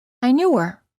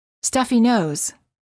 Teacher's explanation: the letter H is often silent in the words he, him, his, her, and hers when these pronouns are not the first words of a sentence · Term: silent H